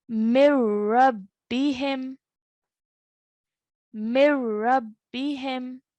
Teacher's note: Okay, so the noon sakin is removed. So there is no nasal sound to be made when you see a noon sakin followed by a ra mushaddad. · No nasal sound when you see a noon sakin followed by a ra mushaddad. It will be read without the noon sakin.